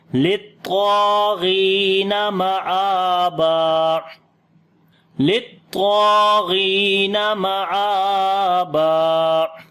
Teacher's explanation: طا اور الف دونوں کو موٹا پڑھیں گے، طا کو لمبا بھی کریں گے ، الف مدہ ہے، غین کو بھی موٹا پڑھیں گے، لیکن